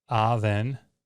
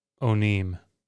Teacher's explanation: this ave vowel pattern will contract to o